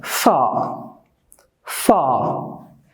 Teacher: if a british person is pronouncing that word far the r is silent in the british in the british accent so far far i